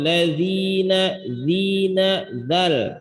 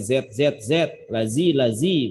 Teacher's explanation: Zina bukan zai, lazina bukan, tapi zal. Ujung lidah bertemu bekerja sama dengan ujung dua gigi seri atas.